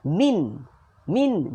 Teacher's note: Hujung lidah letak langit-langit ke atas. Tu bunyi nun.